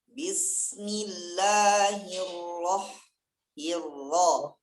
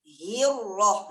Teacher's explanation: Hi-nya jangan tamtid. Jangan dikembangkan.